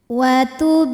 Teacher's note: kecil watul huruf ro dibunyikan secara tarq sebab ro berharakat kasrah maka bacanya tipis pangkal lidah datar · Kemudian selanjutnya ada hukum qalqalah sughra, sebab ada huruf qalqalah yaitu huruf ba yang sukunnya ini sukun asli dan ada di tengah bacaan kita. Maka huruf ba ini kita pantulkan dengan pantulan yang kecil.